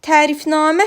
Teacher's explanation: Tərifnamə sözündə həm ə, həm a saitləri uzun tələffüz olunur. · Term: uzun tələffüz olunan sait